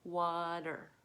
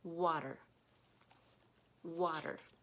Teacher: There's a ridge, a bump, and your tongue is going to flap back to make the der sound